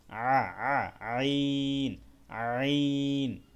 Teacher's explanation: আইনটাও গলার মধ্যভাগ থেকে একটু ভিতর থেকে উচ্চারণ করতে হবে, মধ্যভাগ থেকে মানে ভিতর থেকে নিয়ে আসতে হবে একটু।